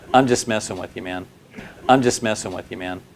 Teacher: This phrase has a falling intonation and that signals it's a statement.